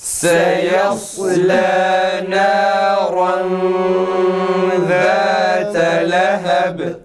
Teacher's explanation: Ra tam kalın çıksın arkadaşlar.